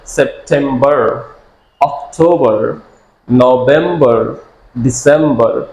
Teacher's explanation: যদি আপনি আমেরিকানদের মতো বলতে চান তাহলে সেপ্টেম্বর, অক্টোবর, নভেম্বর, ডিসেম্বর। আমেরিকানরা আর এর উচ্চারণে স্ট্রেস দিয়ে করে এবং ব্রিটিশরা স্ট্রেস ছাড়া করে